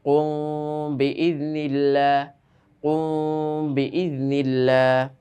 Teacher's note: মিম সাকিনের পরে ইফা শাফাবির এক হরফ বা আসিলে ওই মিম সাকিনকে গুন্নাহ করিয়া পড়িতে হয়